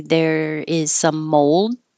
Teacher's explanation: the D is just held